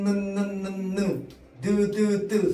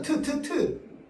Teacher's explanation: 전부 윗잇몸에 붙었다 떨어집니다. 혀가.